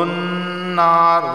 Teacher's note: نون پر تشدید ہے تو یہاں پہ میں غنہ میں نے کیا ہے